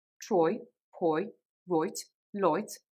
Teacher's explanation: The I phoneme, I as in buy, as in try, as in right, actually becomes more of an oi